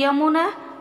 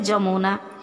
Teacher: य का उच्चारण हिंदी में ज नहीं होता, जबकि ओडिया में शब्द के आरंभ में उपसर्ग युक्त होने पर तथा संयुक्त वर्ण होने पर उच्चारण ज होता है।